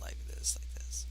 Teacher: we're just going to be vocal fry the whole time